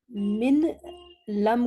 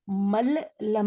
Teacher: نون ساکن کو اب نون ساکن نہیں پڑھیں گے، لام یا را پڑھیں گے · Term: ادغام